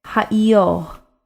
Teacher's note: the resh is a sound that comes from the back of the throat. Following the E sound, it just kind of trails off a bit. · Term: final resh